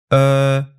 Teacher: with the tongue position in between oh and ooh